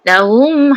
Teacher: Dengung. Rapat mulut dan dengung. Suara yang keluar daripada hidung. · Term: Idgham mislain syafawi